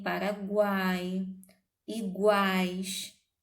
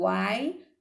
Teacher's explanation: O A é mais forte, ele é a nossa vogal. O U e o I são pronunciados com menos força, são, portanto, semivogais.